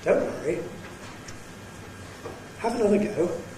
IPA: ˈDon’t ͵worry. ‖ ∣ ˈHave aºnother ͵go.